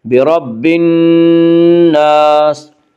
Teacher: نون یا حروف شمسی میں سے ہے، نون سے پہلے الف اور لام ہے، اس لیے الف اور لام کو نہ پڑھیں گے بلکہ بعد والے حرف سے ملا کر پڑھیں گے۔ برب الناس، نون مشدد غنہ ہوگا، غنہ کی مقدار 1 الف ہے۔ برب الناس، الف مدہ، الف ہمیشہ مدہ ہوتا ہے، الف سے پہلے ہمیشہ زبر ہوتا ہے، الف مدہ کو 1 الف کے برابر کھینچ کر پڑھیں گے۔